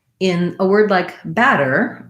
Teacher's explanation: in a word like batter i have first syllable stress and then no stress on the second syllable